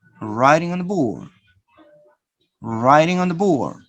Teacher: notice that the da is pronounced very soft or sometimes disappear